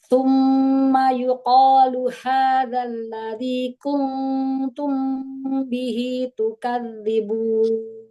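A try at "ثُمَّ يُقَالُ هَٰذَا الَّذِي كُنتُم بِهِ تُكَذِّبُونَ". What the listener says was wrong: ha besar bukan ha kecil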